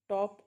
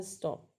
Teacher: यह allophone aspirated है और यह एलोफोन अनएस्पिरेटेड है। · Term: पफ ऑफ एयर